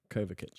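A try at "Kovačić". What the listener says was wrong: It's kind of what you said. You didn't silence the C.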